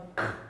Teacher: They are both produced by raising the back of the tongue towards the soft palate, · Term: velar plosives